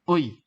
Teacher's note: 애 같은 경우는 어에서 시작해서 이로 갑니다. 어이. 이런 식으로. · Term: 이중모음